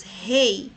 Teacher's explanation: o E é mais forte e o I é a semivogal